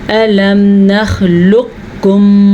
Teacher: میم ساکن کے بعد میم متحرک ہے, یہاں پہ غنہ ہے